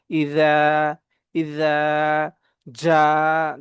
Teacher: যখন ইজার উচ্চারণটা করব তখন আমাদের জিহ্বাটা হালকা বাহিরের দিকে আসবে